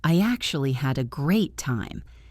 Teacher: Say it with a little emphasis on the word actually.